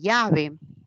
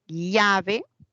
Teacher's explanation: hay un yeísmo eso es propio del costeño en cambio el andino no tiene eso porque en el andino sí la doble l se pronuncia